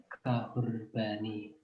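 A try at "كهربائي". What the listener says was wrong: Kahrubai ya, bukan kahrubani.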